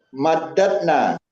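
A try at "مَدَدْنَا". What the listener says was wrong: Nggak pakai tasdid, madatna. Ya, danya pisah. Jadi madatna. Jadi dimatikan yang ketiga tambah na madatna gitu ya. Jadi dipisah baru disukunkan ya Pak ya. Jadi madat.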